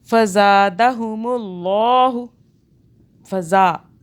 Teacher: ज़ा को हमने खींचा, ये सीटी वाला ज़ा है, सॉफ्ट वाला नहीं है